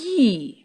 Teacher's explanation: When you say yi, your tongue is raised to a position very close to the roof of your mouth. And it's similar to the position your tongue assumes when you pronounce vowel E.